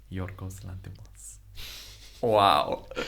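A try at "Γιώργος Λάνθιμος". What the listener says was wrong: It's not pronounced g. It's not Yorgos. It's Yor. It's Yorgos. Yorgos. Yes, Yorgos Lanthimos.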